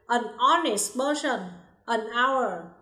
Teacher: Khi chúng ta phát âm thì âm hờ là âm câm. Như vậy, hai danh từ này bắt đầu bằng nguyên âm o.